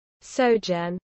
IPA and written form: ˈsɒdʒən (sojourn)